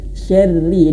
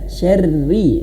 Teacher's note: Ro-nya dibaca tipis. Kenapa? Karena dia berharokat kasrah. Jangan syarri, tidak, tapi syarri, disenyumkan ya.